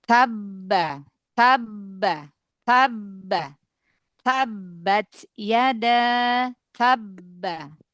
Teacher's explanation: Mbaknya tetap seperti mengalir ya, seperti ada efek qalqalah yang nggak bisa keluar gitu. Karena melebur ke huruf ba yang kedua.